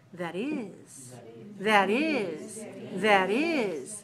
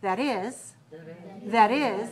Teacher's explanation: when you hear the way that people use that is, the stress is on the is.